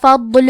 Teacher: کلمت فضل میں حرف ضاد ہے. ضاد کی ادائیگی زبان کے کروٹ اور اوپر کے داڑھوں کے جڑ سے ہے. ضاد حروف تفخیم میں سے ہے تو ہم یہ حرف کو بھاری آواز میں پڑھیں گے اور کیونکہ اس پہ جزم ہے تو ہمیں ضاد کو ظاہر کرنا ہے.